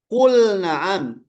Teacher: Seperti lam dengan nun itu makhrajnya berdekatan. Tapi dia tidak diidghamkan.